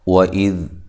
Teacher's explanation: واو کو ہونٹوں کو گول کرتے ہوئے ادا کرنا ہے